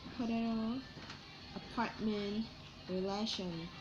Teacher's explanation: the middle syllable is stress in potato, apartment, relation